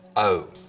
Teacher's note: Fronting again. So the vowel sound in boat, most, hope starts with the tongue further forwards in the mouth. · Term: goat fronting